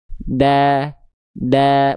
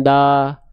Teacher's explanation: Semua vokal A pada fathah. Ketika hurufnya vokalnya A, tipiskan pelafalannya ya.